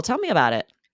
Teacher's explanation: classes that's good nice yes yes as you can see there a flatter intonation right you're not having to emphasize any words because you're just all you mean is oh tell me more